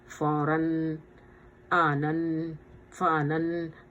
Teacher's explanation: جو تنوین آ رہا ہے اس کو ہم ناک میں لے جا رہے ہیں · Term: تنوین کا اخفا